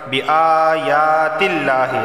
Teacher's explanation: لفظ اللہ سے پہلے زیر آیا ہے تو لفظ اللہ کو باریک پڑھا جائے گا۔